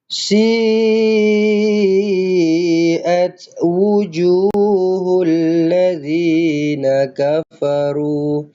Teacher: Mad wajib muttasil. Okey. Empat ataupun lima harakat.